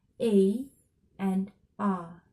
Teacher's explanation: an open vowel the tongue moves down